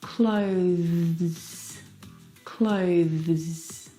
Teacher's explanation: to bring your teeth through your tongue through your tee now the th sound is very very soft it is definitely still there